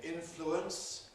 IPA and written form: ˈɪnfluəns (influence)